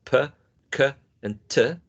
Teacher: All of them are plosive. All of them are voiceless.